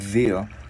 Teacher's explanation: mình sẽ đưa lưỡi qua giữa hai răng mình ép rung ha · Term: chữ D